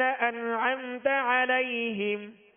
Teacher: اظہار شفوی، غنہ دونوں میں نہیں کریں گے